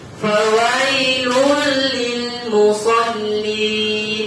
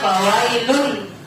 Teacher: Yang kedua, ada hukum yang terdapat di dalamnya, yaitu idgham bila gunnah. Idgham bila gunnah itu artinya dimasukkan dan tidak berdengung.